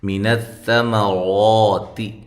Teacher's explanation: سا کو باریک ادا کرنا ہے، اس کے مخرج سے اس کو نکالنا ہے · را کو خوب موٹا کر کے پڑھنا ہے، تا باریک ہے